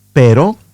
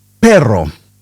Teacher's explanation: We have the single tap R, like in the word but, B-U-T, pero, and the roll R, like in perro.